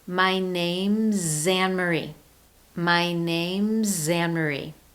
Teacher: the contracted word names with that ending consonant z, and of course, my name begins with a vowel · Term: linked